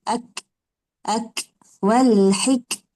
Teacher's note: Kaf tu pula dia huruf hams. Jadi kita keluarkan angin dia.